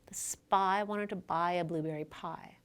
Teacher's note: the word pie is produced with a little puff of air as the p is released. That puff of air is called aspiration. English speakers systematically produce aspiration on voiceless stops at the beginning of a stressed syllable, but not on voiced stops.